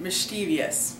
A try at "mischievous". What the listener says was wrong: Mischievous. Now this is one where you're actually pronouncing it incorrectly because there is no third I. Mischievous. Syllables right there. Mischievous. So you could say mischievous if you wanted to, but not mischievous. Mischievous.